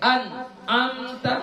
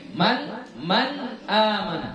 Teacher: dia harus ada sebahagiannya masuk ke kisyum ke rongga hidung kita